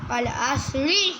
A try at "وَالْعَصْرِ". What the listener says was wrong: ہاں اب آیت ختم ہو رہی ہے نا، اب زیر بھی ختم کر دو، والعصر. سیدھی آواز.